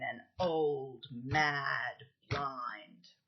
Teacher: Instead of an iamb, Shelley's put there a spondee, and it really gives force to that line.